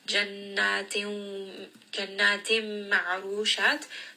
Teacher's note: This is going to be idgham with غنة.